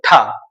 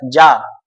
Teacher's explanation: है महाप्राण है आप तुरंत हा सामने रखें और बोले ठ तो आप ठ बोलेंगे तो आपको हाथ में हवा फील होगी तो आप बता सकते हैं कि ठ हमारा जो है महाप्राण